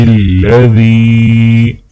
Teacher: ذال کو یا کے ساتھ ملاتے ہوئے ایک الف کے برابر کھینچیں گے